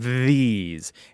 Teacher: say the word these and you can feel your tongue vibrating on your teeth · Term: voice th, voiced TH